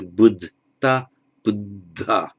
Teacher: The first D loses its aspiration. The ta of the past participle then changes to a D, but becomes aspirated by way of compensation for loss of aspiration of the D of the root.